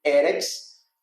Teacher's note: com a sílaba tônica na primeira